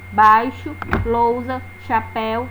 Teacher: Primeiro nós temos o som mais forte, que é da vogal, e depois o da semivogal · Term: ditongo decrescente